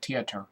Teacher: the Irish tendency to drop the th sound in favor of the T